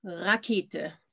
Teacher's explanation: lots of people have problems with it, because the German R, you don't roll the German R, yeah? Your tongue is not involved. It's back there. So when you say the German R, you basically feel it back there.